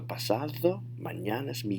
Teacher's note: notice my voice went up in the air